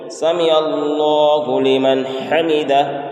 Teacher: اس اللہ کے لام کو پور کرنا ہے، موٹا کرنا ہے، اور ہا کے بعد جو گول ہا ہے یہاں پر بعض حضرات کھینچتے ہیں حمیدہ، تو حمیدہ نہیں ہے، حمیدہ، یعنی گول ہا کو ظاہر کریں گے اور یہاں پر الف نہیں دینا ہے، الف کو ظاہر نہیں کرنا ہے۔